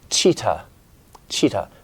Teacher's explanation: in cheetah, your tongue is bent up and touching, making contact, and then creating that friction. It's a stop friction sound.